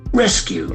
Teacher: Rescue. The accent falls on the first syllable. Rescue. There are two syllables.